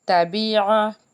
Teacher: تَبِعَ، آئین ہے، آئین کو حلق کے درمیان سے ہم نے ادا کرنا ہے